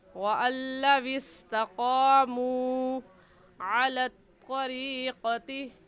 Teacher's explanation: और इसे हम खींच क्यों रहे हैं, क्योंकि वाव साकिन से पहले पेश आ गया है तो वाव मद्दा कहलाएगा और वाव मद्दा को 1 अलिफ के बराबर खींच कर पढ़ते हैं